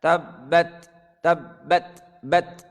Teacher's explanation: Perhatikan bat ketika sukun ada keluar hamasnya, desisannya.